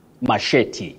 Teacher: With a stress on the second syllable.